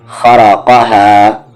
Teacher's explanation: خا، را اور قاف یہاں پر تینوں ہیوی لیٹرز ہیں۔ را ہیوی اس لیے ہے کیونکہ اس پہ زبر ہے، اور خا اور قاف ہمیشہ ہیوی ہوتے ہیں۔ پھر ہا کے ساتھ الف ہے ہا، خرقہا۔